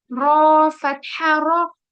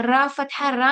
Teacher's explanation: तो रॉ के ऊपर जब भी फतहा होगा तो रॉ हैवी होगा, ठीक है। तो यहाँ पर जो है वो रॉ हैवी होगा, उसका रीजन है फतहा की वजह से, ठीक है।